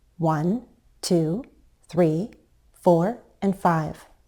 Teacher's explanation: we can use a fall rise when we're counting, perhaps to sound more certain or more authoritative